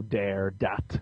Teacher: You know, D's instead of THs. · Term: Brooklyn accent